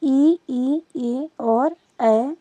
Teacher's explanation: तो जब जीभ के अगले हिस्से से हम स्वरों का उच्चारण करते हैं तो अगला जीभ काम करता है